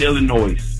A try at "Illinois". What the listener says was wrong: I love you, bro, but the S is silent, my man.